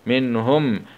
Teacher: ميم سكون مع الإظهار الشفوي